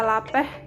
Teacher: Konsonan lateral alveolar I adalah konsonan bersuara yang dibentuk dengan menaikkan daun lidah dan menempelkannya pada gusi dan mengeluarkan udara melewati samping lidah